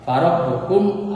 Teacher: Farob bukum, ini farob bukum mimati merapi alif, ini idhar safawi, jadi jangan dengungkan, jadi jelas dibacanya